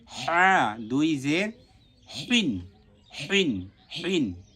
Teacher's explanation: হা কণ্ঠনালীর মাঝখান থেকে উচ্চারণ হবে আবারো আমি বলছি এটা কণ্ঠনালীর মাঝখান থেকে উচ্চারণ হবে উচ্চারণটা যেন